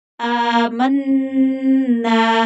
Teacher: अलिफ को भी खींच कर पढ़ेंगे, लंबा करके पढ़ेंगे क्योंकि अलिफ के ऊपर खड़ी जबर है। मन्ना, नून मुशद्दद है तो गुन्ना होगा और खींच कर पढ़ेंगे क्योंकि आगे अलिफ मद्दा है।